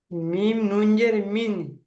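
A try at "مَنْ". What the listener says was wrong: জের, মিম নুন জের নেই ভাই, দেখে পড়েন। মিম নুনের উপরে তাসদিদ, উপর যদি, মিমের উপরে যদি তাসদিদ থাকে আর নুনের উপর যদি তাসদিদে গুণনা হয়, ওটা একটা।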